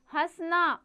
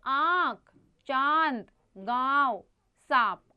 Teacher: इसका उच्चारण नाक और मुंह दोनों से होता है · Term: अनुनासिक